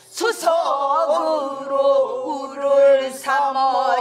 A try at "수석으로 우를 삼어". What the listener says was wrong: 어가 참 안 이뻐잉. 그렇게 놓는 것이 아니야. 수석으로 우를 삼어.